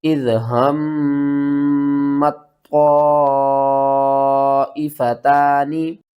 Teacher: تو آپ نے تا کو نہیں پڑھنا، طوا کو پڑھنا ہے اور طوا کو موٹا کر کے پڑھنا ہے۔